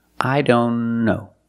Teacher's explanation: Here the T is between consonants, so we don't pronounce it.